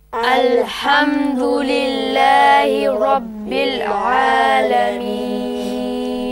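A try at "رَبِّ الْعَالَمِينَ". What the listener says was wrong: Less movement of the lips when you say Rabbil Alameen. So don't say Rabbil, it's Rabbil. Rabbil. When you go Alhamdulillahi, don't try to kind of push the pronunciation out with your lips. It's just nice and easy. It's there in your tongue. Lips doesn't have to do anything about it.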